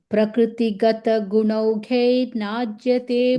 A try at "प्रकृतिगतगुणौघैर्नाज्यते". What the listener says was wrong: Guy, you say guy, right, Bhagini? I hearing it gay, guy.